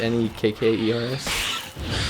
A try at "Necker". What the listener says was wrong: Necker. There's no S. Neckers would be plural and a bit racist, so keep the S off there.